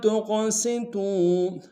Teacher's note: قوف کو موٹا ادا کریں گے، قوف کو قلقلہ سے قلقلہ کریں گے